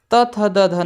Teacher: त थ द ध न यह बोले जाते दंत से